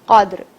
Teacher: دال جزم کے ساتھ آیا ہے تو ہم اسے تھوڑی سی حرکت دیں گے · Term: قطب جد